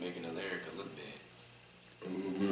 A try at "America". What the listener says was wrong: Wait, sound like you say making a lyric look bad. Pronounce.